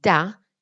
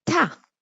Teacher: Thus, okay, for example, thus while for example we use exactly the same parts of the mouth to make the sounds, okay, da and ta. The first is voiced while the second is not.